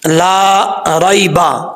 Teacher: لام کے آگے الف ہے، ایک الف کی مقدار، اس کو لمبا کر کے پڑھیں گے۔